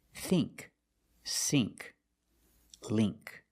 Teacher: You see ink, you make the long E sound, like green beans.